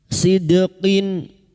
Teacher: Sid dal sukun. Huruf dal yang mati asli di dalam kalimat qalqalah sugro. Jangan lupa dipantulkan.